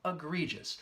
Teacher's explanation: That second syllable has the long E sound